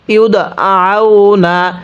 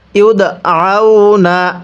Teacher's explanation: দালের মধ্যে কলকলা করে ধাক্কা দিয়ে পড়ব, কারণ দালে যদি সাকিন হয় কলকলা করে পড়তে হয়।